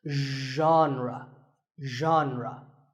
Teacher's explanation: Pay attention to the first sound. It's like sh, but you have to put your voice into it.